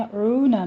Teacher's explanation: عون میں عین کو وسط حلق سے ادا کرتے ہوئے واو مدہ ہے، دونوں ہونٹوں کو گول کر لیجئے